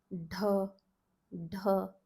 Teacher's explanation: Tip of the tongue on the palate, and you're pronouncing it with the aspiration. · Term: aspirated palate D